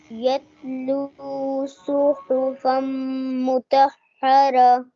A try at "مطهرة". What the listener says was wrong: हा नहीं है, गले से नहीं पढ़ना, इसकी आवाज सीने से, पेट से निकालते हैं. मुतहरा.